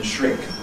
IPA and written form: ʃrɪŋk (shrink)